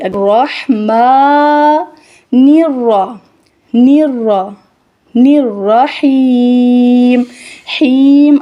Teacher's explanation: میم کو ادا کرتے ہوئے ناک کے اندر آواز نہیں جائے گی۔ الرحیم، حیم ادا کرتے ہوئے بھی ناک کے اندر آواز نہیں جائے گی۔